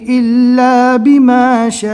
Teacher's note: بڑی مد ہے، کم سے کم 3 اور زیادہ سے زیادہ 4 الف کے برابر کھینچ کر پڑھنا ہے